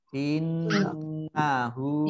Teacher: Kemudian innahu nun tasdid dibaca gunnah, ditekan 2 harokat.